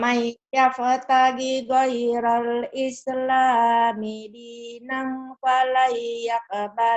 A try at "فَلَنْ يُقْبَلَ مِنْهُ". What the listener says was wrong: Udah bener tuh dinanya. Pala yuk, bukan yak, yuk.